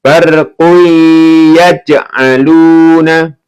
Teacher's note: Ini qalqalah ya, dipantulkan.